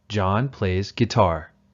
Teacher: guitar uses falling intonation because it is a complete statement